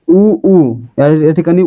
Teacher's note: त्यांचा उच्चार करा आपल्या ओठांची हालचाल होणार आहे जसं की उणी उ चा उच्चार करताना आपले ओठ गोल होत आहेत म्हणजे ओठांची हालचाल होते म्हणून या ठिकाणी उ काय आहेत औष्य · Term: औष्ठ्य